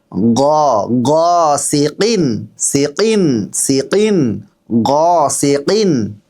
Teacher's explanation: গ আমরা বাংলায় যেভাবে গ বলি সেই গ বললে কিন্তু ভুল হয়ে যাবে গ একটু ভিতর থেকে বলবেন